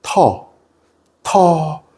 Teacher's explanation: 터가 약간 혀가 뒤로 들어감과 함께 이렇게 아래로 약간 떨어지는 느낌이나요